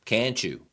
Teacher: 这里的字母 T 是按照 CH, CH 音来处理的